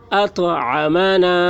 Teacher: طا حروف قلقلہ میں سے ہے اور اس پر جزم ہے، اس لیے طا میں قلقلہ ہوگا.